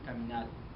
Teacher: lo cambian la r por la l